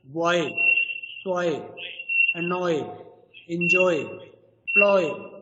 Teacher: These are the words where you will find this diphthong, and we have the third one, that is the diphthong. It is pronounced as a long O sound that quickly slides into long E sound